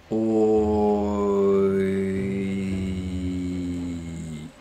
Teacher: In my accent, oi starts way back here, o, and moves forwards and up, e. So the whole thing goes oi. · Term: diphthongs